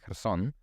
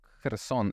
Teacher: like with a very plosive K there in the beginning